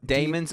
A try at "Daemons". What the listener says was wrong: It's demons. They just don't pronounce the A. It's a silent A. That's how that works.